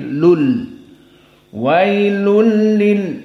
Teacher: sebelumnya fathah adalah madlin dan tanwin wailun bertemu dengan lam maka Idgham dan bila gunah maksudnya idgham dimasukkan tanwin kepada lam sehingga tidak ada bacaan wailun lunnya tidak ada tapi Lul wailul